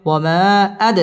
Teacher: বামে হামজা মধ্যে মুনফাসিল তিন আলিফ টেনে পড়তে হবে